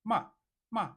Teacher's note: And here we have the falling tone or the fourth tone call it ma ma. This is coming from a high pitch to low pitch · See, it's coming from a high pitch to a low pitch, right? From here, as in here, like this.